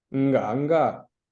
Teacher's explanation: You see how the verb kind of loses the last R, so it becomes nga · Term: reduplication